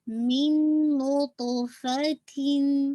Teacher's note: Make sure कीजिए मिन ये जो गुन्ना है ये मोस्ट कंप्लीट गुन्ना है और ये आपका इदगाम है, इदगाम कामिल। दूसरे नून के अंदर आवाज़ कंप्लीटली मर्ज हो गई है